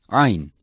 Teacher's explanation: Ain is special to Arabic and pronounced from the center of the throat by choking the throat slightly. It is a strong consonant.